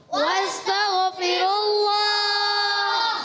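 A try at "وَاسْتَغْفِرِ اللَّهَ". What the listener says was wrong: اب یہاں سے ایک بچے کی آواز آئی واستغفر اللہ. تغ نہیں کرنا. واستغفر اللہ.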